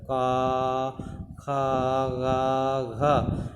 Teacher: क वर्ग का उच्चारण हम जो है कंठ से करते हैं।